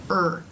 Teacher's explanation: to make the r sound correctly R to make this sound the tongue will pull back back somewhat it will fatten and raise in the middle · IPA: ɹ